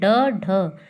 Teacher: जिस व्यंजन को बोलने में जैसे जीभ पहले ऊपर उठकर मूर्धा को स्पर्श करे और फिर झटके से नीचे आ जाए, जैसे ड, ढ, तो जीभ मूर्धा को स्पर्श करती है फिर झटके से नीचे आती है, इसलिए उत्क्षिप्त व्यंजन ड, ढ।